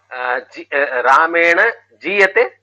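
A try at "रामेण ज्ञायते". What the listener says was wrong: No, I told you Nya Dhatu. It is a Samyukta. Nyayate only. It will not become Niyate. Because Nya when you Akaram, you don't put Ikaram.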